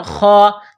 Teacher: جس طرح انسان گلے سے بلغم نکالتا ہے اسی طرح اس خا کو نکالیں گے. خا کے اوپر کڑا زبر ہے، ایک الف کی لمٹ میں کھینچنا ہے. خا کڑا زبر خا.